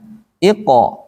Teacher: Kalau yang lain kan ditipiskan, ih tipis. Tapi ini iko tetap tebal, khusus qaf.